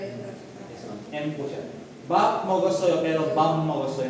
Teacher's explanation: yung b pag na-meet yung m nagiging m na po yung letter po natin